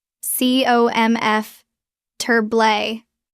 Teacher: Notice the stress is on the first syllable.